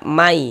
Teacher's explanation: Jadi nun sukunnya masuk melebur ke huruf ya. Sehingga kita baca may. Jangan dibaca man. · Cara membacanya dengan cara memasukkan kemudian disertai dengan ghunah. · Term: idgham bi ghunah